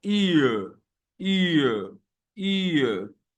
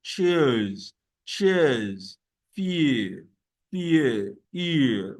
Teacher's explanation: The ear sound is a glide from the E to schwa sound.